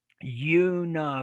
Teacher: So notice how you start with a Y. You, then the schwa.